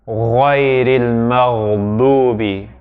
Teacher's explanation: It's a goggling sound there at the top of the throat.